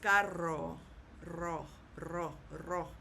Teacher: you have to kind of roll that R for a little bit of time · Now, if you had the word C-A-R-R-O, then you kind of hold that R a little bit if you can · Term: double R